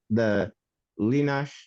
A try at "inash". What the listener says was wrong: That's not an L, that's an I.